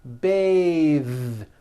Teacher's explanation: when you change it into a verb to bathe the vowel changes to an a sound and the th is voiced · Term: voiced th